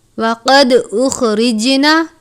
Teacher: جیم پر بھی قلقلہ کرتے ہیں، ان 5 حروف میں شامل ہے. · دال پر قلقلہ کرتے ہیں